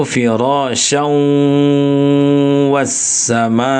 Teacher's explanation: Yang masuk rongga hidung itu firas wasama. Jadi syau itu bunyinya lewatkan ke rongga hidung. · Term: dengung